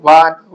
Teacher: దంతోష్టం అంటే దంతం మరియు పేదాల నుండి పుట్టిందని అర్థం